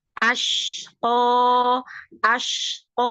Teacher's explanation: sukun lam sukun dialirkan dilebarkan ya asqo asqo syin Ada tafasyi qo naikkan ee arah suaranya ke atas